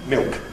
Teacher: we add a bit of lip-rounding, [mɪok], and that makes it familiar. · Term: L Vocalization